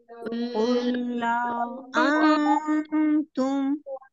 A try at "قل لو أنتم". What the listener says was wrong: लाऊ नहीं होगा, लव होगा, लाऊ नहीं। ठीक है, लाम के ऊपर जो जबर है उसको आपने खींच के लंबा नहीं करना है, जल्दी पढ़ना है। قل لو أنتم